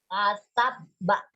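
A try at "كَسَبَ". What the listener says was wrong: Mana nggak ada tasdidnya itu, kasabak gimana? Kok nggak jelas kamu itu? Ya, kasaba.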